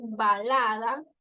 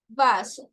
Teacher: b labial y la v nosotros utilizamos los dientes para mencionarla